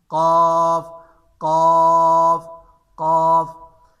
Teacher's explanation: زبان کی جڑ اوپر تالو کی طرف اٹھتی ہے لیکن لگتی نہیں ہے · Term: صفت استعلاء